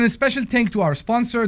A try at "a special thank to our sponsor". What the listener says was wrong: special tank. A special tank. That's what you said. You said a special tank.